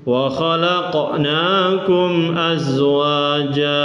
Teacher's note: Khalaq ini qaf sukun disebut apa? Qalqalah. Qalqalatun. Qalqalah artinya mantul.